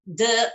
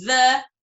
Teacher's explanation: Casos representativos de la mayoría de los alumnos, por ejemplo, la producción de la oclusiva alveolar en lugar de la fricativa dental